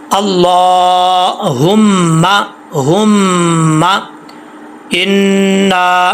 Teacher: मीम और नून के ऊपर शद आ जाए तो गुन्ना होता है एक अलिफ की मिकदार। तो यहाँ पे मीम मुशद्दद है, गुन्ना करेंगे।